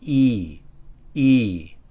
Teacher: in this case, it's a low tone. It is not cut short, so it sounds like E, E.